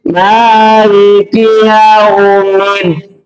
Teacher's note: Tetapi di situ karena ada tasdid saja. Jadi tasdid itu perlu ada hentakan, Dalnya itu ada hentakan. · Dal betul ditekan, tetapi tidak harus berhenti. Artinya tidak harus lama berhenti.